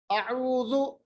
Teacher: हमजा का मखरज ये हलकी हरफ है, अक्सा हलक यानी आखिर वाले हिस्से हलक से अदा होता है